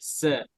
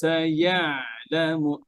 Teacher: সিন, সা, জিহ্বার আগা, নিচে দাঁতের গোড়ায় সা।